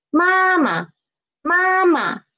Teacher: because it is after the first tone so it is lower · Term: neutral tone